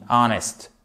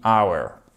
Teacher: le mot heure en anglais qui est hour, attention, on ne prononce pas le H. C'est un des très rares mots avec notamment honest qui commence par un H et qui voit ce H muet.